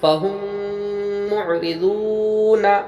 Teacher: یہاں پر میم سے میم آیا، ادغام شفوی ہوا، غنہ کے ساتھ پڑھیں گے، را کے نیچے زیر، را کو باریک پڑھیں گے، واو ساکن پہلے پیش، وا مدہ ہوا، ایک الف مقدار کھینچ کے پڑھیں گے۔